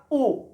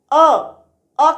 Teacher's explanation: होठों की आकृति गोल हो गई वृत्त के समान, तो वृत्त के समान गोल हो गई तो वो वृत्ताकार कहलाए।